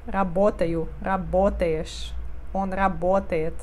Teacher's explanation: Nesse verbo O é sempre sílaba tônica, então O fica O. Não muda som para A, não.